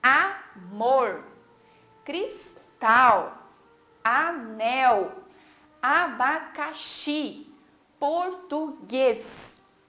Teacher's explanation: todas elas têm a última sílaba como a sílaba mais forte. Então, essas são palavras oxítonas.